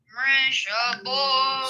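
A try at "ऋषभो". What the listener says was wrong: It should be bho. B-H, not B-O. Bho. Bho.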